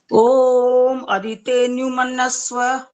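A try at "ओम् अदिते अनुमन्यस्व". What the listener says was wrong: ये तो और अशुद्ध हो गया। मन्नस्व हो गया, मन्नस्व नहीं है।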